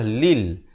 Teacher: Lam baris kasrah bunyi li, bukan bunyi le. Jadi bertemu lam jadi lil.